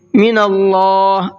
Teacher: اللہ کے لام کو منہ بھر کے پڑھنا ہے، اس لیے کہ اللہ کے لام سے پہلے زبر ہے